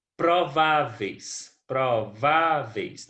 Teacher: Na palavra prováveis, nós temos a penúltima sílaba tônica. Portanto, prováveis é prováveis é paroxítona, certo?